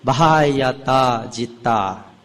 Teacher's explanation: BH, the H is also audible